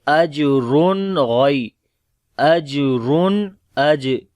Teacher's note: اجرن، جیم کے اوپر کلکلا کریں گے جو کہ کمزور ہوگا، را کو موٹا پڑھیں گے، دو پیش ہے اس کے اوپر، اور یعنی کہ تنوین کے بعد اب یہاں پر آگے غین آ گیا تو یہاں پر اظہار ہوگا نون کا